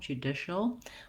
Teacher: It's a dark L. So you might put a short little schwa in there, judicial.